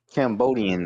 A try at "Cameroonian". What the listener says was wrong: there's no B there. Cameroon. Cameroon.